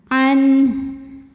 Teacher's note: Bunyinya n tidak ditahan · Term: izhar